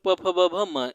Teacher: प वर्ग, प वर्ग प फ ब भ म, इसके उच्चारण में ओठ दोनों सटते हैं, ओठ दोनों स्पर्श करते हैं, प फ ब भ म दोनों ओठ आपस में स्पर्श करते हैं, इसलिए ओष्ठ, ओष्ठ वर्ण कहते हैं इसको।